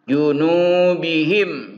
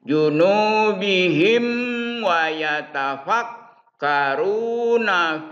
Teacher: Jadi mimnya harus dibaca tertutup suara mimnya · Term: izhar safawi